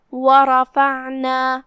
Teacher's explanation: پھر یہاں حرف العین ہے، ہم اسے حلق کے درمیان والے حصے سے پڑھیں گے اور جو کہ اس پہ جزم ہے، لہذا ہم اسے ظاہر کریں گے۔ دھیان رہے ہم عین کو ہلاتے نہیں ہیں، عین حروف القلقلہ میں سے نہیں ہے